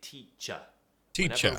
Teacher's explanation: word finishes with er we pronounce it with uh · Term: schwa sound